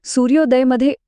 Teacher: सूर्यमधला अ आणि उदयमधला उ एकत्र येऊन सूर्योदयमध्ये ओ तयार झाला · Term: गुण संधी